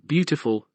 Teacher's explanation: there are three syllables in the word beautiful bful and the word stress falls on the first one